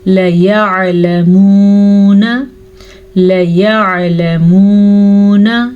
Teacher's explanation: लाम को लंबा करने की गलती मत कीजिएगा, आइन के मखरज का ध्यान रखें।